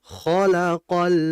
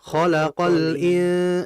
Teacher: Izhar alqamariyah di situ lamnya harus dibaca ngalir. Khalaqal. Nah, itu harus dialir dulu.